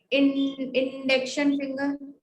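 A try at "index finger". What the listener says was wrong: इंडेक्शन नहीं बोलेंगे, इसे कहेंगे इंडेक्स. नो it is not इंडिकेशन फिंगर, the it's name is इंडेक्स फिंगर. इंडेक्स फिंगर, है ना.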